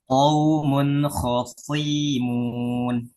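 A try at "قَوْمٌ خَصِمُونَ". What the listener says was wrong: Suinya pendek. Khosimun.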